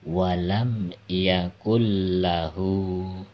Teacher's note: huruf nunnya tidak terbaca, jadi langsung masuk ke dalam huruf lam ya. Walam yakul lahu. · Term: Idgham bila gunah